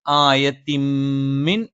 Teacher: ആ തൻവീനിന് ശേഷമുള്ള മീമിലേക്ക് നമ്മൾ ചേർത്ത് വെക്കും. · ഈ തൻവീൻ എന്നുള്ള ആ ഒരു നൂനായ ഉച്ചാരണം നമ്മൾ ശേഷമുള്ള മീമിലേക്ക് ചേർത്തും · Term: ഇദ്ഗാമും ബിഗുന്നയാണ്